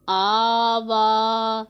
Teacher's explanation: हमज़ा खड़ा ज़बर आ, वाव खड़ा ज़बर वा, आ वा। ये खड़ी हरकत हैं, खड़ा ज़बर है दोनों के ऊपर। इसको एक अलिफ के जितना लंबा करके पढ़ना है हमने।